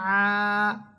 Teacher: আইন আলিফ সাবর আ, জবরের পর খালি আলিফ এক আলিফ টান হবে।